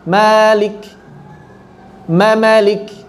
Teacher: mamalik mimnya dua, malik mimnya satu tapi ditambah mad jadi dua harokat. Mimnya jadi dua juga panjangnya.